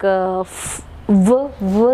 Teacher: Or if I ask you something like v sound, it is voiced labiodental consonant. Labiodental because we use the upper teeth and the lower lip to produce the sound.